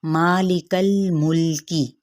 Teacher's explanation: مالک الملکی، اب ما پہ مد سریب الف کا قائم مقام ہے، یاد رکھیے گا ماں کی ساؤنڈ نہیں آنی چاہیے، ما کھلے منہ کے ساتھ